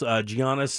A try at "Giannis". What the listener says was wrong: I had to teach them this. The G is silent. Giannis.